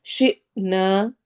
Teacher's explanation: جب بھی حمزہ کے اوپر جزم آتی ہے تو وہ تھوڑا جھٹکا دے کے پڑھا جاتا ہے